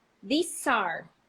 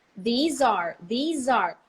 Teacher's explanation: the Z is absolutely clear when there is a verb to be right after